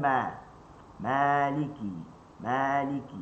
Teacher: Panjang pada ma tak boleh. Mesti dua harakat.